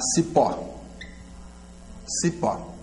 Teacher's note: a sílaba tônica vai ser a última, é oxítona e termina em O.